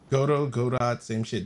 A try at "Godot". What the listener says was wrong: There's no T there. Pronunciation. But Godot is Godot.